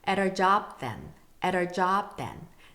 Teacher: 이것도 연음이 많고 flap T 사운드, 르르르 사운드가 많아서 굉장히 힘드시죠?